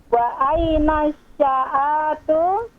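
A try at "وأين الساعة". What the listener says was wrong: Ainnya jangan dipanjangkan. Wa aina sa'atu. A-nya pendek. Wa aina sa'atu.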